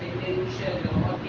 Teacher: نون ساکن ہے، بعد میں حروف اخفاء میں سے شین ہے، تو یہاں پہ اخفاء کریں گے